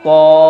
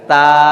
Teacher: تو جب ادا کریں گے تو ہونٹوں کو ہلکا سا گول کر دیں گے، اور تا جب پڑھیں گے تو ہونٹوں کو بالکل پھیلا دیں گے